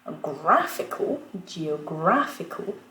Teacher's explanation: Ce qui est intéressant, c'est que gra va rester accentué